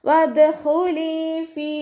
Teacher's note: ലാമിൻ്റെ കൂടെ യാമദ് വന്നു. 2 കൗണ്ട് നീട്ടിക്കൊടുക്കുക.